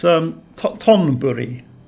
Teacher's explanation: And it's Thonburi with an aspirated T. But the transliteration system puts it TH for aspirated T's.